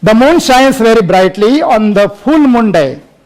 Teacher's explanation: While reading in Indian style, the speaker gives stress on every word. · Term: Indian reading